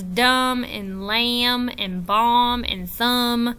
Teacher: We do not hear the B in words like lamb and thumb and dumb and bomb. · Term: silent